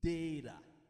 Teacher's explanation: il est prononcé comme un flap T ou bien un petit D tout petit